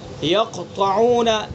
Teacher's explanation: یقطعون قلقلہ ہوگا لیکن تیسرے درجے کا